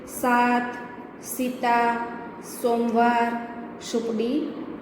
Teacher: સામાન્ય રીતે આપણે જ્યારે સ બોલતા હોઈએ છીએ ત્યારે જીભનું ટેરવું એ દાંત અને પેઢા જોડાય ત્યાં અડાડીને બોલાય છે